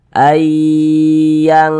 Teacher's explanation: Ayang yang begitu lebih condong berbunyi Eng dia Ayang kemudian didengungkan suaranya itu kita tahan kita panjangkan sejenak